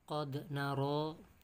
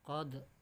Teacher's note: Qad naro, kata Allah, kami melihat, memperhatikan, mengamati. Qad, ini qalqalah sughra, cirinya berada di tengah kalimat. Dal sukun termasuk huruf qalqalah.